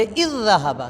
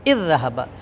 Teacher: اب جو کہ اس کو اکٹھا پڑھنا تھا تو ہم پہلی ذال ساکنہ ہے، پہلی ذال کا دوسری ذال میں ادغام کریں گے تو اس کو پڑھیں گے اذ ذہبا۔ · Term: ادغام مثلین